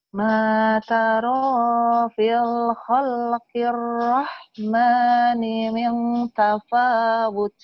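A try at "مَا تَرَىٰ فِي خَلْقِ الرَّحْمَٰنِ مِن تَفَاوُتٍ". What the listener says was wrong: Bukan matarol, kan nggak ada lamnya bu.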